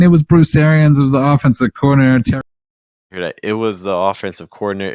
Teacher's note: that z sound kind of blends with that th a lot more and you just rapidly get to that schwa sound